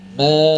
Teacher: ketika huruf mim itu sudah berharakat maka tidak boleh lagi menggunakan rongga hidung